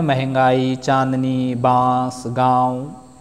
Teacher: अनुनासिक जिनके उच्चारण में मुहां और नाक दोनों से वायु बाहर निकलती है